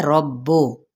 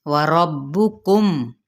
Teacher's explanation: ہونٹوں کی نا تمام گلائی کے ساتھ، اور را کی زبر کو با کے ساتھ ملائیں گے، با کی پیش کو مجہول نہیں پڑھنا